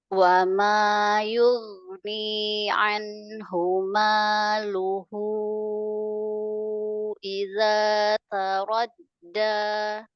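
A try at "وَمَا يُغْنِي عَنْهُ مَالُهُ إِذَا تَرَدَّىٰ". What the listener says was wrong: ya kurang tebal, kurang tafkhim.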